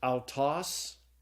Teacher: It's pronounced ow, like in sauerkraut. And so the Greek word is pronounced autos.